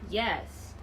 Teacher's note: This fall intonation indicates that this is my answer and I do not have any intention to add more to it. Basically, this fall intonation is to give a clear answer.